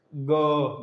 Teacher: कंठ में आपके थोड़ा सा कंपन फील हो रहा है।